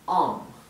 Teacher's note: Porque se pronuncia, es un sonido entre medio de una A y una O. No es ni una A ni una O, es algo entre medio. Así que lo pronuncian O, ¿bien? · La L en este caso es muda, no se pronuncia. Se omite completamente la pronunciación de la L.